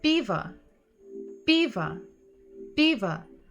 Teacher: P, P. So even if we hear at the end sound a, we know that it's probably o because it's not stressed